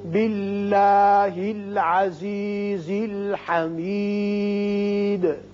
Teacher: اس میں اللہ میں لام باریک ہوگا اس لیے کہ پیچھے زیر آ گیا۔ یہاں یاد رکھیے دال ساکن پر آپ جب بھی قلقلہ ادا کریں تو قلقلہ کی صورت میں زبر زیر یا پیش کی مشابت نہ ہو، بالکل گلائی کی صورت میں، یعنی حمید حمیدی نہ ہو۔